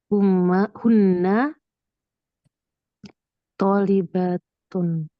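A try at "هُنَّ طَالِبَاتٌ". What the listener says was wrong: Tolibatun, panjang ya baknya.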